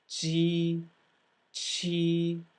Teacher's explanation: back of the tongue releases from the back of the hard palate